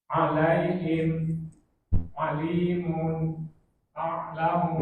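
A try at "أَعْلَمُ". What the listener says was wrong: Nah, a'lamu a-nya nggak boleh kegeser ke ain, harus a jelas baru ini masuk ke ain. Nah, begitu Pak. A'lamu.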